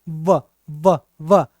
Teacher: दांत और ओष्ठ, होठ दोनों का प्रयोग होता है इसको बोलने में। बोलिए व तो नीचे वाला होठ ऊपर वाले दांत से टकराता है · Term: दंतोष्ठ